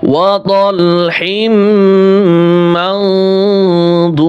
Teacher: মিম নুন জবর মাও গুন্নাটা মোটা করে উচ্চারণ করতে হবে গুন্নার আওয়াজটা মোটা করতে হবে